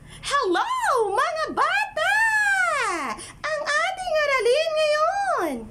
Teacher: Too high modal pitch, as if we are nagging